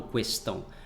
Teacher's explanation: Pessoas que têm de 60 anos para cima, né? Geralmente os jovens já não utilizam mais essa pronúncia do U depois da letra Q